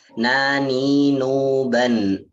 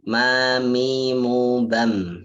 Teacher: Jadi keluar daripada rongga hidung, yang mana juga dalam mengucapkan makhraj nun ini menggunakan lisan, menggunakan lidah, sedangkan makhraj mim ini kita menggunakan bibir